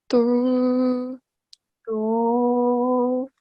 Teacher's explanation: to has a thick sound, so we are raising the back of our tongue towards the roof of the mouth, okay? While the tip of the tongue is touching the upper front 2 teeth, okay?